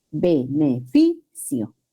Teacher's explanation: El acento recae en la penúltima sílaba. Beneficio. Igual, no se escribe el acento porque termina en vocal. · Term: grave o llana, Grave o llana